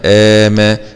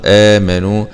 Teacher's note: ده بقى مد بدل. مد البدل ده عند حفص بيمد بمقدار حركتين، يبقى أشبه بالمد الطبيعي. ميم فتحة ما آما، نون ضمة نو آمنوا، واو سكون مد طبيعي آمنوا.